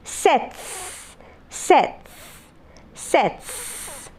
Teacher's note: So t is voiceless here. The preceding sound t is voiceless. That is the reason as to why you have the s sound.